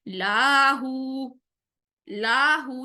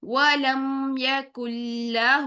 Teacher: اب most important یہاں پر بھی ایک چیز کہ لاہو کا لام لمبا نہیں کریں گے، اکثر ہم بے دھیانی میں کیا کرتے ہیں، لاہو لاہو نہیں کریں گے، یہاں پر لام کے اوپر زبر ہے تو صرف 1 کاؤنٹ رکھیں گے، لام کی زبر کو 1 کاؤنٹ سے لمبا نہیں کریں گے، اس کو مد اصلی نہیں بنائیں گے، لاہو سے میننگ چینج ہو جائے گا، تو ہم کیا کریں گے، وَلَمْ يَكُنْ لَهُ، ہو کی پیش کو 2 کاؤنٹس لمبا کرنا ہے، ٹھیک ہے؟